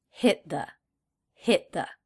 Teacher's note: the tee at the end of hit is a stop T because the next word begins with a consonant